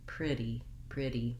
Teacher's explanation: So the flap T, as you probably know if you've been watching my videos, sounds more like a light D.